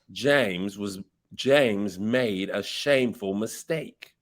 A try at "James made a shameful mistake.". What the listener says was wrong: Very good.